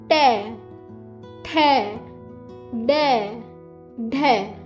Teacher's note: इस वर्ग को बोलते हुए बच्चों आप महसूस करेंगे कि जो आपकी जीभ का आगे वाला हिस्सा है ना, वो आपके तालू के बिल्कुल बीचों बीच टच होगा, जिसे हम मूर्धा बोलते हैं। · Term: टवर्ग